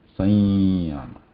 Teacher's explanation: So after that there is ya, but before that there is just a pure nasal sound, right? Sanya. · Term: anuswara